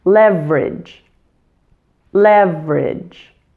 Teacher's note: The middle syllable in leverage is so reduced that it seems to disappear, which just leaves you with the ending ridge.